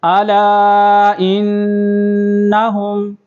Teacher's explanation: حمزہ کو نون کے ساتھ ملائیں گے